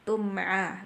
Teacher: mim mati bertemu ain. Nah, itu izhar syafawi, jelas, nggak boleh ada dengung.